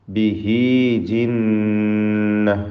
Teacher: നൂൻ മുഷദ്ദദ ശബ്ദ നൽകപ്പെട്ട നൂനിനെ മണിച്ചുകൊണ്ട് ഉച്ചരിക്കേണ്ടതാണ്